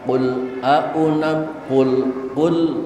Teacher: Mohon jangan timbul suara qalqalah sehingga terdengar suara bacaan qul, jangan pakai le. Karena lam bukan huruf qalqalah. Bacalah tanpa pantulan qalqalah.